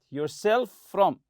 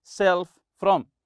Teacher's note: To prevent yourself from, as if it's one letter F, one sound F